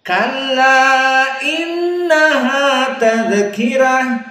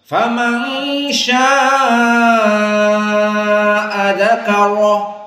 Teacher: Maka dzakarah mufakhhamah ra. Kenapa? Karena sebelumnya kaf maftuh.